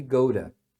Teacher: Porque, ó, o verbo ir é go, você fala go. E aí o T aqui se torna um R, porque tá no meio de vogais, né? A vogal se torna o schwa, que é aquele som do a, e pronto.